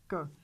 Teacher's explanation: The vocal cords don't vibrate. K is voiceless.